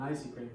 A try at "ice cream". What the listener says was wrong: In English, in that particular word, we don't pronounce the letter E. We just have to say ice cream, not ice cream.